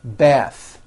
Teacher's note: The word bath is a noun with an unvoiced TH.